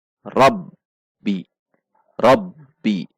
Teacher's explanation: Masuk ke ba tasydid. Ba tasydid berarti ada tekanan. Dan karena sifat syiddah, maka seperti tertahan sejenak.